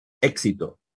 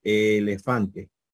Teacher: Éxito es una E breve, elefante es una E larga, que en este caso sería una eta.